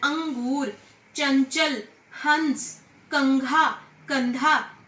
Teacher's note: अनुस्वार का उच्चारण नाक से होता है। इसका प्रयोग सभी पंचम वर्ण अक्षर के स्थान पर होता है, जैसे अंगूर।